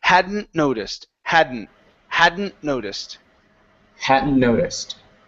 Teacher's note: so tuck emphasize more on that n Sound okay and and not pronouncing that t Okay because we have an N right afterwards